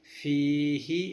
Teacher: ഫീഹ് എന്ന് നീട്ടി ആ ഹ എന്ന ശബ്ദം പുറത്ത് വിട്ട് നിർത്തണം. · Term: മദ് ആരിദു സുക്കൂൻ